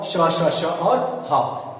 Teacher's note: जिनको बोलने में हमें गर्म वायु के जरिए, घर्षण के जरिए जो वर्ण निकलते हैं उन्हें हम ऊष्म व्यंजन बोलते हैं